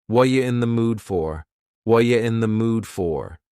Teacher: The word are is gone, and the word you has been reduced to ya. So when we link together, what and you, super fast. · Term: extremely reduced